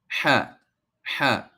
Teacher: Now ha kind of comes from the throat, okay? The lower portion of the throat.